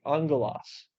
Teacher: the two Gammas make an NG sound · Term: gamma nasal